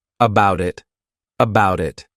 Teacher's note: I'll actually use a soft D sound, and you'll hear that sound on both sides of the word, and I'll say it as one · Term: linking